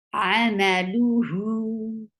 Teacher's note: You will give sukoon at the end, and it will get sifa of rakhawa. It means the sound should flow very well. Rakhawa is a flow of sound.